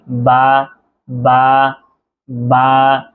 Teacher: ঠোটের ভিজায় ভিজায়। বা বা মানে দুই ঠোঁট একসাথে লাগিয়ে